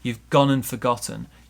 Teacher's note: notice also the d in and disappears so we just have none you've gone and forgotten you've gone